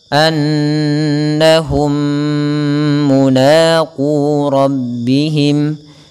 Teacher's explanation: Annahum, atau yang pertama idghamkan dulu mim yang pertama ke yang kedua dan ditahan dengan gunnah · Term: idgham mimi